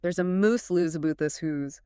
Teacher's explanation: the Scottish accent flattens that diphthong entirely, shifting it forward into a pure, tight oo sound. So house becomes whose. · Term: oo shift